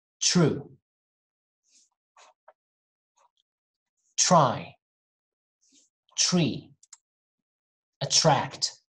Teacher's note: when there is the t and r letters together when we see those together we usually hear a ch sound